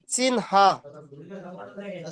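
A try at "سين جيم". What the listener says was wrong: সিন আবারও আপনি হা বলছেন।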